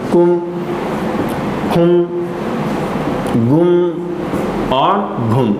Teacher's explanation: इनका उच्चारण नासिका के साथ किया जाता है · इनको दोस्तों अनुनासिक उ लगा कर के पढ़ा जाता है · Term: अनुनासिक वर्ण